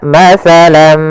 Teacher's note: tanwinnya masuk kepada huruf mim, tinggallah bunyi suara huruf min